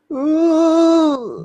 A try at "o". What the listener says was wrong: No, you're going ooh. Okay, it's not a ooh. Ooh is more like Britney Spears. It's like I'm actually doing a O, but it sounds like a ooh. Like it sounds like more like a ooh, but it's actually a O. Decrease the volume on the top part.